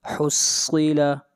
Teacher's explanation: صاد کو موٹا پڑھیں گے، صاد حروف مستعلیہ میں سے ہے